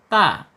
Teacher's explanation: Makhrajnya ada di al-lisan ya. Ujung lidah menyentuh pangkal gigi seri atas. Ta. Kemudian secara sifatnya ada di al-hams yaitu mengalir ya, mengalir napas.